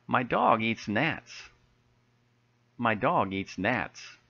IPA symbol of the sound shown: ae